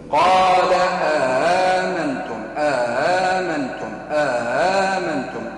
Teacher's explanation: المد في الهمزة الثانية المسهلة